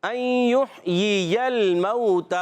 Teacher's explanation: ہا کو حلق کے درمیان والے حصے سے